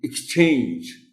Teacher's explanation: CH پر ہم stress دیتے ہیں اور اسی پر پرائمری اسٹریس آئے گا